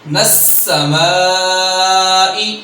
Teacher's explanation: میم کو لمبا کرنا ہے کیونکہ میم کے بعد الف حرف مدہ ہے اور فوراً بعد حمزہ آ رہا ہے